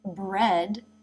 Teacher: the e as in bed vowel. And again, the tongue moves up to make the d.